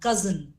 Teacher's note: we generally use the S sound but it has the z sound